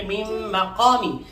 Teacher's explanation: من مقامی یہاں نون مشدد کی وجہ سے یعنی نون ساکن ہے اور اس کے بعد میم مشدد ہے غنہ کیا جائے گا. اسے ادغام مع الغنہ بھی کہہ سکتے ہیں.